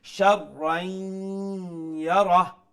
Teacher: Sharrain, ra as a shadda, double letter, double sound, and because after the tanween there is letter ya, so we will incorporate the tanween into the ya, which is known as idgham, and it will be pronounced with ghunna.